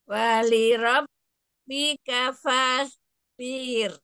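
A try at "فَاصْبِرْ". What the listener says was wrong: fa-nya jangan dipanjangkan ya jangan fas tapi fas tebal fas bir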